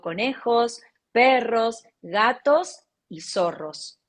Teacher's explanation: si enumero, enumero y sigue la enumeración de cosas, siempre voy con tono ascendente